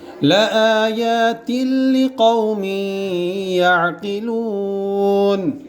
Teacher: یہ تا کے نیچے دو زیر کی تنوین, اس کے بعد لام آیا ادغام بلا غنہ